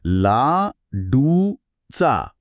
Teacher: उ म्हणताना ओठ गोल होतात आणि लगेच लगेच चा म्हणताना त्यांना पुन्हा पसरावे लागते